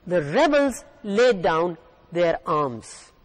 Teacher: down their arms here the word is a noun the rebels the stress is on the first part of the word rebels